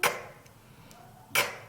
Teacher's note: K의 소리는 크 하는 소리입니다. 성대가 크 울리지 않고요. 새는 소리고요. 유지는 크 유지되지 않죠. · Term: 유지되지 않는 새는 소리